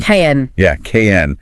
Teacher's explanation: Try saying the word can without using a vowel. Just jump your tongue straight from the C to the N.